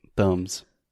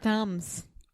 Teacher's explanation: we never say B there's no B thumbs yeah thumbs just imagine the B is not there thumbs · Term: silent B